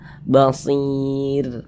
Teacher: Sebelum ro sukun ada huruf ya sukun. Nah, maka huruf ro-nya dibaca tarkik, baca tipis.